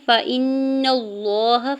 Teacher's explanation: فإن اللہ، فا کے زبر کو جلدی سے ادا کرنا ہے، حمزہ کی زیر کو نون مشدد کے ساتھ ملاتے ہوئے نون مشدد پہ غنہ کریں گے اور نون کے زبر کو لام جلالہ کے ساتھ ملاتے ہوئے اللہ کے نام کو پر پڑھیں گے اور اوپر سے کھڑی زبر 2 حرکت کھینچ کے بھی ادا کریں گے.